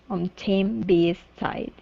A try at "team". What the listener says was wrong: Okay, give me a long E instead of team.